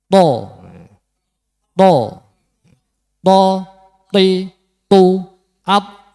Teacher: To niku makhrajnya ujung lidah di pangkal gigi depan atas.